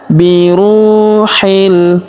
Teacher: huruf ru kita panjangkan dua harakat karena wau sukun di depannya